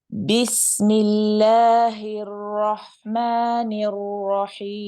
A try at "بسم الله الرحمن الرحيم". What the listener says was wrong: Just be careful of the ra, especially when you say ar-rahim. It sounds like you are rounding the lips a little bit. And it sounds like ar-ra, ra. So ar-ra, right? You want the clear fatha.